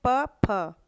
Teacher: प, फ दोनों ओठों से बोला जाता है, ओष्ठ्य व्यंजन है ये। और ये फ जो है ना, ये फ ओठ के साथ साथ इसमें वायु भी निकलती है मुंह से, उसे हम बोलेंगे फ, इसे हम बोलेंगे फ, ना कि फ।